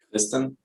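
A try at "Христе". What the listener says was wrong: Okay, it's not a R, it's like a Russian R. So Kriste.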